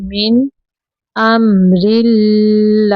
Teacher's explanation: रा के नीचे ज़ेर है, रा को बारीक पढ़ना है